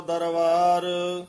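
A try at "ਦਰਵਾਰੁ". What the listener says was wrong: ਇਥੇ ਵਾਵੇ ਨਾਲ ਬੋਲਣਾ ਦਰਬਾਰ ਨਹੀਂ ਕਹਿਣਾ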